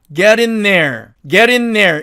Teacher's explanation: 자, 그래서 이 경우에는 ing을 이렇게 in으로 바꿔주고 그 다음에 앞에 있는 자음이 은이 되니까 뒤에 th 즉 the라는 발음이 나오니까 이놈이 앞에 있는 n의 동화가 되어갖고 자기도 n으로 변하게 된 겁니다.